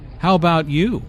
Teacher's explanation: notice the intonation falls here because the speaker is going to follow it up with a detailed question